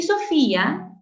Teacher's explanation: tienes secuencia de cerrada I más una abierta A con acento en la cerrada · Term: hiato acentual